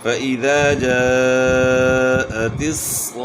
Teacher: وقف جب گول تا پر وقف کیا جائے تو یہ ہائے ساکنہ سے تبدیل ہو جاتی ہے، تو یہ آخر میں ہائے ساکنہ کی آواز آئے گی